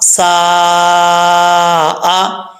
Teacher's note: سین الف زبر سا، حمزہ زبر آ، سا آ. یہاں مد متصل ہے، ٹھیک ہے، 5 الف کے برابر ہے، آپ اس کو لمبا کر سکتے ہیں